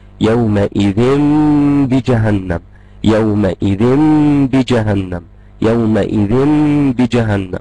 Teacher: أول خطوة حاجة عن النون اللي موجودة في التنوين، اللي هي مش موجودة أساسا قدامي لكنها موجودة في النطق، زي ما عرفنا النون الساكنة بتاعت التنوين اللي موجودة في النطق دي، عشان هحط بدلها ميم، الميم دي هخفيها، الإخفاء هيكون مع غنة بمقدار حركتين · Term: الإقلاب